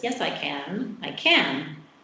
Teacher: I'm stressing can, yes, I'm emphasizing this, so I'd use the full vowel.